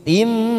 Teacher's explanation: huruf mim yang diikuti alif kita baca pendek karena di situ kasroh bukan fathah